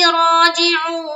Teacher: जो हर्फ आयन है वो हमजा ना बने, वो आयन ही रहे, उसको हम हलक से अदा करेंगे